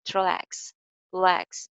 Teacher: Relax ka first syllable unstressed hai. So iska jo r hai, re, usko clearly nahi bolenge. Relax. L sound pe focus rakhna apni.